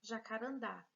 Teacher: quando a última sílaba da palavra é a sílaba tônica, nós temos aí a ocorrência de palavra oxítona. A última sílaba é a mais forte.